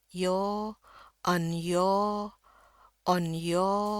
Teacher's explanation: R yang jangan dibunyiin sama sekali. Yo, panjangin aja. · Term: R-nya hilang